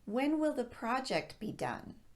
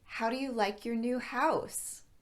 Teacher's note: going to require more than a yes or a no response our pitch swings downward at the end